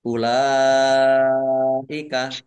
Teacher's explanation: karena bertemu dengan huruf hamzah dalam satu kata maka menjadi mad wajib muttasil dibaca panjang